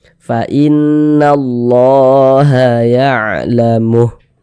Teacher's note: Tapi kalau harokat fathah itu bentuknya berdiri seperti ini, berbentuk alif kecil seperti ini, maka huruf yang di atasnya memiliki tanda seperti ini dibaca panjang. Sehingga lafaz Allah dibaca panjang. Mad tabi'i panjang 2 harokat.